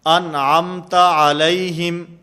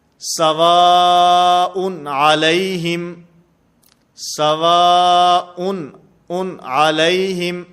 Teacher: غنہ نہیں ہوگا، آواز ناک کے اندر نہیں جائے گی، بلکہ اس کو واضح کر کے ظاہر کر کے پڑھا جائے گا